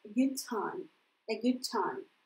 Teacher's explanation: D опять не выдерживает конкуренции с T. И это связывается a good time.